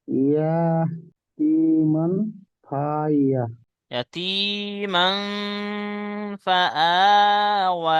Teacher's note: হুম অসাকিনের এর উপর খাড়া জবর আলিফ মাদ্দার সমতুল্য, তাই এক আলিফ পরিমাণ টান দিয়ে পড়তে হবে।